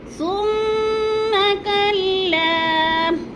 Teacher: لا کو تھوڑا سا کھینچنا ہے، الف مدہ 1 سے 2 الف کے برابر